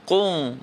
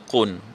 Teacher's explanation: Kemudian contoh lain, haqiqun ala, tanwin juga bertemu dengan ain, jangan bunyi qung, bunyi qun.